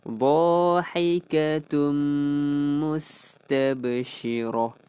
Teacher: Kemudian dhahikatum, tanwin bertemu mim, idgham bi gunnah, masukkan beserta dengung.